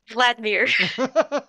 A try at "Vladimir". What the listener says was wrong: well I thought there was three syllables vlir Vladimir